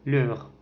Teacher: Par exemple dans le mot voyelle. E C'est une voyelle antérieure mi-ouverte, arrondie et orale. On le trouve dans le mot leur.